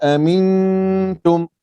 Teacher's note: Nun sambil nak pergi ke ta tu, kita dengung tengah-tengah tu.